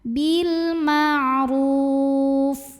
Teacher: ro-nya dipanjangkan boleh 2, boleh 4, boleh 6 harokat asal konsisten dalam sekali bacaan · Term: mad arid li sukun